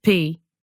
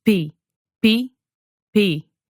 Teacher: the difference between English and Portuguese is all about that puff of air